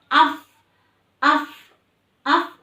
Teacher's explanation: Fidinillahi af harus ada udara yang mengalir karena fa itu memiliki sifat hamas ya.